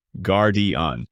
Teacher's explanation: with a soft French R and a smooth flowing ending. Guardian, giving it an elegant tone. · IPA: /ɡaʁ.djɛ̃/